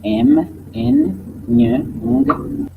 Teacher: il y a obstacle par la bouche et l'air s'échappe librement par la nez en leur production. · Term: Les nasales